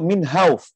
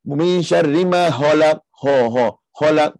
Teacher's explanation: kita pastikan kha itu tebal ataupun kha tebal, jelaskan sifat kha tu. Jangan bunyi halak dengan ha.